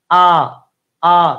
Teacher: কেন্দ্রীয় ধ্বনি হচ্ছে আ উচ্চারণ হচ্ছে বিবৃত